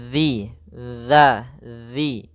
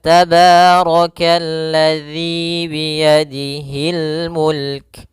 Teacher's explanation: Karena di sini adalah zal yang mana makhrajnya, tempat keluarnya adalah ujung lidah kita menempel dengan gigi seri atas, dan dia kalau bisa sedikit tergigit gitu ya, zi. Maka tabarakalladzi biyadihil mulk.